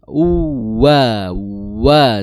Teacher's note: wau ya makhrajnya adalah di kedua bibir dengan cara mengkuncupkan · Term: waw